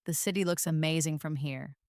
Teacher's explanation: Feel how looks amazing flows together smoothly almost like a single word.